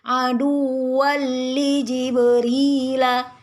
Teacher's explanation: lam tanwin dengan lam adalah idgham bila gunnah sehingga tidak dengung juga